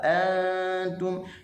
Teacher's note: nun mati kena dengun di sisi huruf ta. Bila huruf ta huruf yang nipis, maka kena ra'i nipisnya huruf nun. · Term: ikhfa